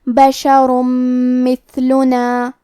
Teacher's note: میم حروف الادغام بغنہ میں سے ہے تو ہم یہ حکم کو غنہ اور تشدید کے ساتھ ادا کریں گے